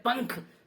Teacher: जैसे हम बोलते हैं पंख, तो पैक के ऊपर जो बिंदु, जो डॉट लगा होता है वो अनुस्वार कहलाता है, और अनुस्वार का उच्चारण नासिका यानी नाक से होता है।